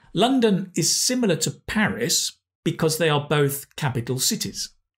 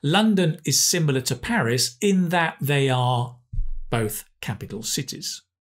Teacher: the to becomes a tuh, because we're stressing the nouns